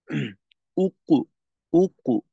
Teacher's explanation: পেশের উচ্চারণের সময় আমরা যে ঠোঁটটা গোল করি এই গোলটা পরবর্তী জজমওয়ালা হরফের উচ্চারণেও বাকি থেকে যায় তখন যেটা হয় যে কলকলার আওয়াজটা বা জজমের আওয়াজটা ক্লিয়ার হয়